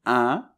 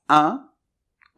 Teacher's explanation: Alors attention, on va décomposer le mot, donc première syllabe c’est le IN [ɛ̃], la nasale [ɛ̃]. Un peu comme [ɛː], mais ça vibre plus dans le nez